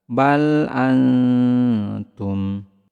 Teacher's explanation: Bal antum, bal antum, samarkan huruf nun sukunnya, kemudian tahan, kemudian lidah kita bersiap-siap ke huruf ta